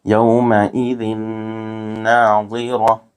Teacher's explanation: یہاں تنوین کے بعد دوسرے کلمے میں حروف یرملون میں سے نون آ رہا ہے اس لیے یہاں ادغام مع الغنہ ہوگا، یہاں غنہ کے ساتھ ملا کر پڑھیں گے۔ جس حرف پر تشدید ہو اس کو 2 مرتبہ پڑھتے ہیں، ایک مرتبہ پچھلے والے حرف سے ملا کر، ایک مرتبہ اس کو خود ادا کرتے ہیں۔